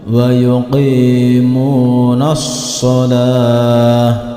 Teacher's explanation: ketika kita berhenti di sini ta marbutahnya berubah menjadi ha, yaitu wa yuqimunas shalah, berubah menjadi ha jika dihentikan.